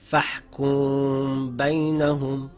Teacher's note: If after a Meem sakin there appears the letter Ba, ikhfa will take place. This means it is pronounced with a light nasal sound in the nose for 2 counts, keeping the lips slightly open. The sound of the Meem is hidden and the lips are shaped, ready to pronounce the Ba.